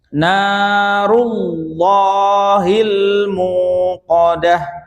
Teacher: contoh ra yang berharokat dhamma, ya, maka dia dibaca tebal ya